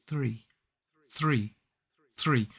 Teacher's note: It's a much quicker, sort of lighter sound. We don't need to get aggressive with our TH. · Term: voiceless TH sound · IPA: /θriː/